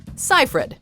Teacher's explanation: Most can agree that the last name has 2 syllables, yet people often insert a mysterious G, as in Siegfried.